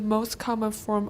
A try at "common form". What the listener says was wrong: you missed the N the first time you said comma form can you hear the difference common form